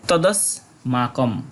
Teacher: পুরো উচ্চারিত হবে এবং সে আকারটা বহন করবে মা কম এবং শেষে অনুস্বরে সঠিক উচ্চারণ হবে অর্ধেক ম এর মতো